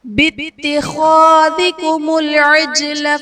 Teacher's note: بِاتِّخَاذِكُمُ الْعِجْلَ میں جیم حرف قلقلہ ساکن ہے، تو یہاں پر قلقلہ خوب ظاہر کریں گے